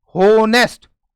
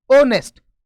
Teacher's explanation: एच के बाद में ओ है, इसमें ध्यान रखना है एच साइलेंट होता है, यानी ये उच्चारण नहीं किया जाता